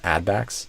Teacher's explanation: I would stress add instead of backs.